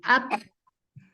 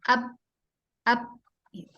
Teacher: ketika berharokat dia menjauhkan ba, ketika dia sukun itu dibenturkan atau dipertemukan